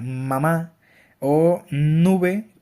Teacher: Como ejemplo pues puede ser mamá o nube, que al momento de hacer el sonido que produce en palabra nube, pues podemos sentir como el aire sale por nuestra nariz · para esto el aire fluye a través de la nariz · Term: nasal